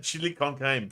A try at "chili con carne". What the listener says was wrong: No, that's RNE. You sound like CAME.